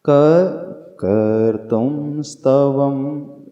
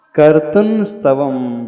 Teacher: कर्तुन स्तव, उन्ना का उच्चारण करेंगे, कर्तुम की जगह कर्तुन पढ़ेंगे, क्योंकि यहाँ पे आगे दंती सा आ गया है तो उसका उच्चारण स्थान जो होता है नासिका से हो जाता है।